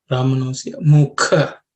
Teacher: In terms of pronunciation, Brahmanosya mukha. This ka is the second letter in the ka varga, so it has to be aspirated.